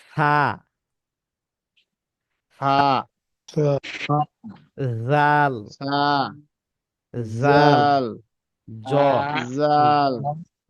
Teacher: জিহ্বার আগা সামনের উপরে দুই দাঁতের গোড়ার আগার সঙ্গে লাগা।